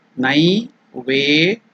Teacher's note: It is Ve elongated.